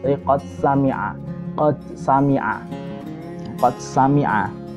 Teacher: boleh dibaca idhar dengan alasan untuk menjelaskan bahwa dalnya ini termasuk huruf qalqalah